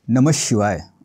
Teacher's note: विसर्गाच्या पुढे श आला तर श चा उच्चार अर्धा करायचा आहे म्हणून हे वाक्य नमः शिवाय असं होईल नमः शिवाय असं नाही